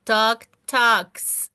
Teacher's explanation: Entonces esa K debe sonar con la S.